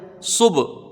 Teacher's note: ملا کے پڑھا جائے گا، با یہاں پر ساکن ہے، صب، با میں قلقلہ ہوگا، حروف قلقلہ میں سے ہے